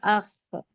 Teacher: جہاں اخ پڑھنے پر آخر میں آواز آ رہی وہ خا کا مخرج ہے، یعنی کہ حلق کا اوپری حصہ۔